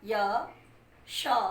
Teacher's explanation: हमारी जीवा ऊपर, जिसको हम तालु कहते हैं, वहाँ स्पर्श कर रही है, तो इसका उच्चारण स्थान तालु हो जाएगा।